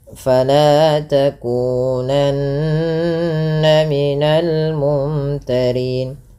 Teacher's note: Fala mad tabi'i, lanya 2 harakat